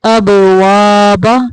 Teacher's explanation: اب با کو کلکلا کریں گے